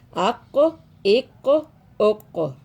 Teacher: یہ پانچواں حروف مستعلیہ، یہ حروف قلقلہ ہو گیا. یہ حروف مستعلیہ بھی ہے قاف، اس کو ہم موٹا بھی پڑھیں گے، پر پڑھیں گے، اور اس پہ قلقلہ بھی کریں گے